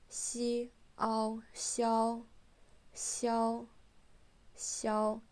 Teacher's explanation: Notice it's flat and kind of high up. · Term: first tone